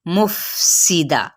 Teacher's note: सीन की सीटी, लेकिन बारीक